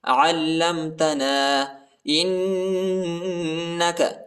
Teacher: حمزہ کو نون کے ساتھ ملائیں گے اور غنہ بھی کریں گے